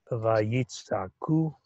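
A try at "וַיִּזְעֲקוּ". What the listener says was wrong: I know we also have the word sa'ak, but this is za'ak.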